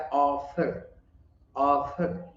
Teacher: फर के बीच में एक लाइट वॉवेल आ रहा है, वॉवेल साउंड, लेकिन उतना प्रोमिनेंट नहीं है